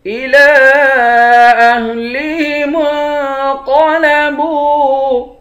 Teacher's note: إِلَىٰ أَهْلِهِمُ انقلبوا، الى لام پر کھڑا زبر ہے، ایک الف کی مقدار کھینچیں گے، اس پر مد ہے، اس مد کو 3 الف کی مقدار کھینچ کر پڑھتے ہیں۔ میم کو نون کے ساتھ ملا کر نون پر اخفا کریں گے، قاف کو موٹا پڑھیں گے، با کو واو کے ساتھ ملا کر ایک الف کی مقدار کھینچیں گے۔